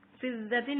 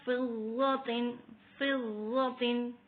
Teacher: ضاد موٹا پڑھا جاتا ہے ہمیشہ. یہاں پہ بہت لحاظ رکھ کے پڑھا جاتا ہے، جہاں پہ ضاد، ذال اور وہ آ جائے تو وہاں پہ فرق ہوتا ہے، اس کی ساؤنڈ میں، اس کی آوازوں میں فرق ہوتا ہے، اس لیے جو ہے بہت ہی احتیاط سے پڑھا جائے، اس میں غلطی کرنا لہنا جلی ہوتا ہے.